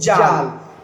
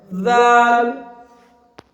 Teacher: जबान को दांतों से दब करके पढ़ना है, दाल